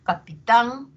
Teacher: tan va a tener un tono más alto y va a tener mayor duración y va a tener mayor intensidad, ¿no? Que son las propiedades de la sílaba tónica.